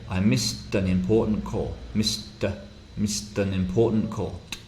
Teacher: this final ed ending, which is a t, missed, connects with the next vowel.